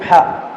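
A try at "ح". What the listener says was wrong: Ha. Ini kurang ngalir ini sedikit. Ha. Ini kok jadi naik. Kalau ada suara itu berarti antum naik ke tenggorokan bagian atas. Harusnya tempat keluarnya huruf ha itu di tenggorokan paling tengah.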